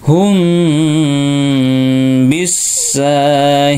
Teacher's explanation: mim sekun bertemu ba Ikhfa Syafawi Ya ditahan dan didengungkan Ya ditahan dua ketukan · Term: Ikhfa safawi